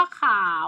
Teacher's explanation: เสียงจัตวารูปสามัญนะคะมันก็เลยไม่ต้องใส่มาวรรณยุกต์อะไรเลยนะคะแต่เวลาออกเสียงจะเป็นจัตวา